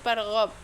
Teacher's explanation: Farghab yang selanjutnya itu farghab qalqala sugro karena ba sukun di akhir kata, dibaca memantul ringan.